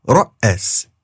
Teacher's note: And if you don't pronounce that glottal stop twice as long, you get ra'as, meaning to lead.